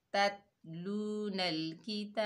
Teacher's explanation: ये बा जो है हरूफ कलकला में से आ रहा है, तो यहाँ पर कलकला होगा, कलकला कुबरा डबल साउंड आएगा बा का